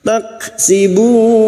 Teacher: kaf sukun yang memiliki sifat sidda dan hamas